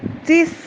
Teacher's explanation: تا میں اگین ہمس رکھے، ساتھ میں سانس جاری ہو رہی ہو